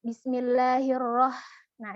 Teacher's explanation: terlalu banyak getarannya kemudian Bismillah hirohman disini adalah huruf H tipis huruf H tipis keluarnya dari tenggorokan yang tengah